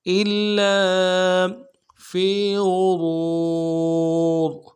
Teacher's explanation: حمزہ کو لام کے ساتھ ملانا ہے، لام کے اوپر تشدید زور دیں گے کہ لام کے ساتھ الف مدہ ہے، ایک الف دال میں کھینچیں گے